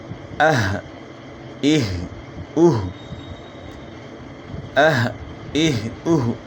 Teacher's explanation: ایک وائبریشن سی ہوتی ہے اور ہا کی آواز میں ایک بھاری پن ہے. تو اس سے آپ اندازہ لگا سکتے ہیں کہ ہا صحیح ہو گئی ہے اور حمزہ بھی صحیح ہو گیا, اس میں جھٹکا ہے ا ای او.